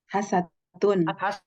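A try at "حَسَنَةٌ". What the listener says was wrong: Hasanatun. Jangan dibuang dulu. Hasanatun.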